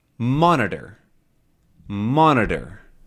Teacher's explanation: And the stressed one is monitor, mon, right?